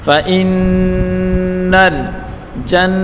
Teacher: نون مشدد غنہ کے ساتھ پڑھیں گے اور نون کو لام کے ساتھ ملا کر پڑھیں گے. فإن الجنة جیم کو نون کے ساتھ ملا کر پڑھیں گے اور نون مشدد غنہ کے ساتھ پڑھیں گے اور نون کے اوپر پڑھی حرکتیں بغیر کھینچے پڑھیں گے اور تا کے اوپر بھی پڑھی حرکتیں بغیر کھینچے پڑھیں گے.